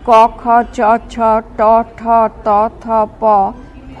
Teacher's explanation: অঘোষ ও সঘোষ ধ্বনি বর্গের প্রথম ও দ্বিতীয় ধ্বনি উচ্চারণের সময় ধ্বনির সঙ্গে স্বরতন্ত্রীর কম্পনের সুর মেশে না